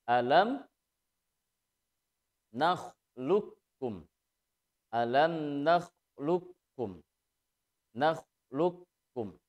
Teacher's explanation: Nah, hanya karena qaf dengan kaf terjadi hukum idgham mutaqaribain, maka membacanya qaf lebur ke huruf kaf sehingga seolah-olah qaf itu tidak ada. Sehingga membacanya alam nakhluqkum.